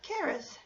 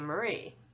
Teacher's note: because charis has a rhythm similar to standard middle name marie both names have two syllables with a stress on the second syllable